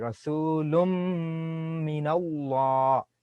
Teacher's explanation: I don't pronounce the tanwin sound lun. I go to the mim directly.